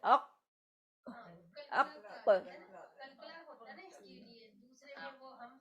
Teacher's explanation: ساکن کی صورت میں کیا ہوتا ہے، شدت سے بند ہوتا ہے ، شدت سے اق اق، ہاں مگر فرسٹ دو خاصیتیں ہیں، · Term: قاف